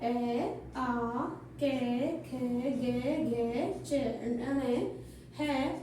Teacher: इन वर्णों का उच्चारण स्थान माना जाता है कंठ। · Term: कंठ्य संज्ञा